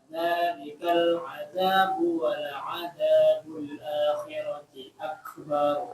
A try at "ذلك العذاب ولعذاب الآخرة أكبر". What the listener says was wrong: Nah, sini teman-teman lihat ya, jangan panjang ya. Misalkan akbar nggak boleh. Kenapa? Di sana tidak ada alif yang bikin dia panjang. Tapi akbar jadi langsung.